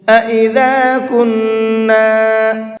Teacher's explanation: کنّا کے نون کے اندر غنہ کریں گے۔